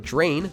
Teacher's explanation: We say the word drain with a J sound instead of drain, which would sound a bit odd.